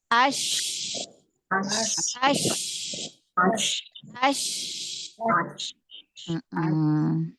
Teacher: Shin juga kan punya sifat hamas, ya, mengalir nafas. Jadi ketika kita mensukunkan huruf shin, maka alirkan suaranya, alirkan nafasnya.